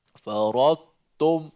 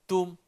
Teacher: hati-hati bila kita dah sebut idgham secara sebahagian, jangan tebalkan tum tu.